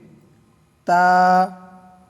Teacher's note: জিহ্বার আগা উপরের দাঁতের গোড়ার দিকে গিয়ে লাগবে।